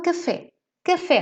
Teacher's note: a sílaba tônica está em fé que a última